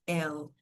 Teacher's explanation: A gente faz esse som do L em inglês. L. Não é como no português brasileiro, que a gente usa um som de U